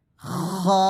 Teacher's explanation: খা গলার সামনের দিক থেকে